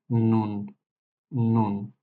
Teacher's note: জিহ্বাটা উপরের সামনের তালুতে স্পর্শ করবে